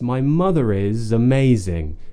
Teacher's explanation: We're using the Z at the end of is to join to amazing as well, because amazing begins with a vowel.